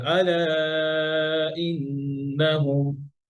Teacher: ভাই আলায় ফোর হারাকা মাদ করেন